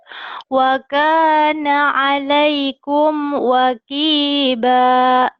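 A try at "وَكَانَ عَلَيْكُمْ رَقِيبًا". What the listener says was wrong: Wakiba. Kok wakiba sih? Wa kana 'alaikum ro, itu bukan wakiba. Sopi juga ro jadi wa jadi ro. Ro ya, roqiba.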